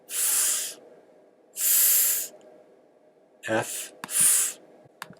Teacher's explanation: Then we have the fricative, which is voiceless.